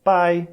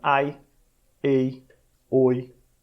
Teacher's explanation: tem que ser pequenininho tem que ser breve tem que ser leve ele é uma semivogal então na palavra pai você tem uma única vogal esse tipo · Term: ditongo decrescente